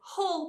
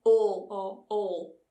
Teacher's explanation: in many parts of Yorkshire we don't pronounce that first H in words so Hull becomes all or all put wooden all close the